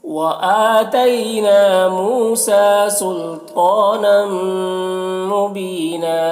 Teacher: بین میں یا مدہ ہے، ایک الف کے برابر کھینچیں گے اور یہاں پر وقف کریں گے تو ایک زبر کے ساتھ الف پڑھیں گے